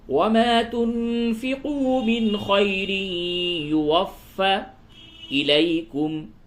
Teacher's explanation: فا مشدد ہے، یعنی فا کے اوپر تشدید ہے، سختی کے ساتھ ملائیں